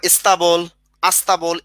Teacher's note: শব্দের আগে একটা স্বরধ্বনি চলে আসলো, এটাকে বলা হয় আদি স্বরাগম